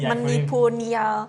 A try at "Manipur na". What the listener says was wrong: Manipur na, not niya. Manipur na.